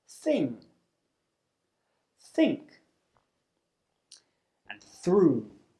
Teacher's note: the voiceless Dental fricative this means that you create friction between the tongue and the top teeth · it's unvoiced which means you don't use your vocal cords to make the sound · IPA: θ